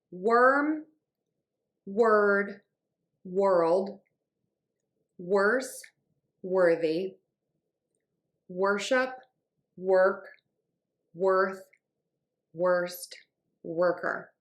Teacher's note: for all of these common words, when we have that WOR, we're going to say WER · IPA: /wɝ/